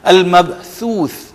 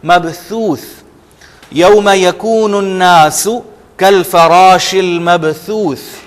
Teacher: ثا بالکل زبان کے اوپری حصے سے، اور آپ پریشر بالکل بھی نہیں ڈالیں گے زبان پہ